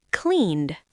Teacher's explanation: It ends in a voiced N sound, clean. To make it past tense, we just add a D, cleaned.